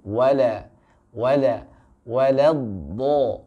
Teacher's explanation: Jadi huruf lam harus dalam keadaan tipis terlebih dahulu.